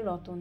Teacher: উচ্চারণের সুবিধার জন্য সংযুক্ত ব্যঞ্জন ভেঙে উভয়ের মধ্যে স্বরধ্বনির আগমন ঘটানোকে কিন্তু স্বরভক্তি বা বিপ্রকর্ষ বলা হয়